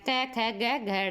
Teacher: जिनकी गले से आवाज है वो हो गए कंठे